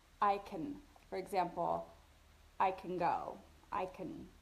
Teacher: Can is often linked and reduced to can. I can.